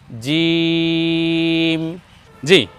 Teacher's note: আমরা উচ্চারণ করব জিহ্বার মধ্যখান তার বরাবর উপরে তালুর সঙ্গে লাগিয়ে